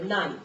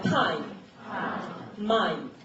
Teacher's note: 이 이중모음이 왔을 때 뒤에 모음은 흘린다, 더 똑똑하게 발음한다.